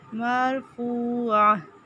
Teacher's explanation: مرفوعہ عین وسط حلق سے فو واو مدہ واو ساکن سے پہلے پیش. مرفوعہ فو کو ایک الف کے برابر لمبا کریں گے